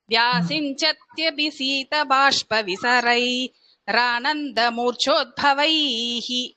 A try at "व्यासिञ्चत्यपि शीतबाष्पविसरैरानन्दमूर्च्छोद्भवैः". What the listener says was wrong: இந்த ஆனந்தன் இருக்குல்ல, அந்த இடத்துல மூச்சு எடுத்துக்க கூடாது. ஏன்னா அந்த விசர்க்கத்தை எடுத்துட்டு இந்த ஆவை கனெக்ட் பண்ணி நம்ம போடும்பொழுது அது கனெக்டிங் லெட்டர் ஆயிடும்.